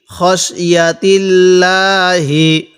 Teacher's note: এই লামটাকে চিকন করে পড়ব কারণ আল্লাহ শব্দের লামের পূর্বে জের থাকলে সেখানে চিকন করে পড়তে হয়